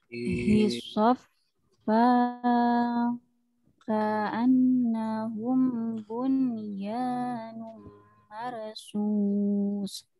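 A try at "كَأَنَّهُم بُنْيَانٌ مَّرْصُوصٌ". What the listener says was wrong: Ah, yang ditahan-tahan jangan buru-buru. Ka'an kemudian nahum hukum mim sukun ya, mimnya tidak ada harokatnya, dia ikhfa syafawi.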